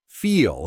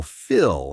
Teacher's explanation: >> The vowel difference is key here. Feel has that long e sound while Phil has a short i sound.